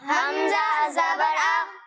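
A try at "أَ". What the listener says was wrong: ابھی بھی بعض بچے جھٹکا دے رہے ہیں, آ نہیں, حمزہ زبر آ.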